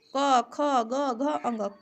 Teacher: क, ख, ग, घ, अंग कंठ के स्पर्श से बोले जाते हैं। ठीक है, जैसे क, ख, ग ये सब कंठ से बोले जाते हैं।